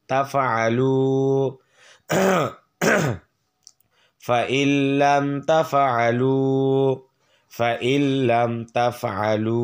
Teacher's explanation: পেশের বাম পাশে জজমওয়ালা ওয়াও এক আলিফ টান